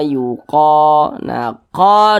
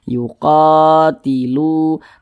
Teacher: qo Ini dibaca panjang Mad Thobi'i panjangnya dua harakat